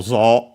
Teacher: now written as zo, u, but pronounced as long o. The u is only the lengthening of the preceding o nowadays. The accent can stay on that, on the longer vowel, so it has to be, when it's accented, like in our case, on the zo.